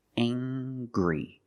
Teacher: We use the nasal sound M plus the hard G.